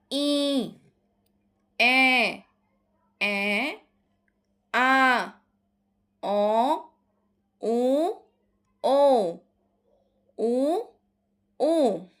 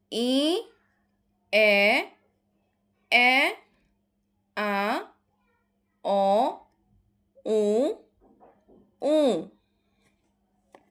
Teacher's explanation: ধ্বনিগুলো উচ্চারণের সময় কোমল তালু যদি খানিকটা নিচের দিকে নেমে আসে স্বাভাবিক অবস্থার থেকে তাহলে বায়ু তখন নাক দিয়েও বের হয়। এর ফলে ধ্বনিগুলো অনুনাসিক হয়ে যায়। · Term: অনুনাসিক স্বরধ্বনি